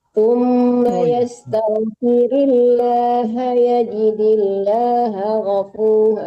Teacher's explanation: Jangan tertahan H-nya enggak panjang ya.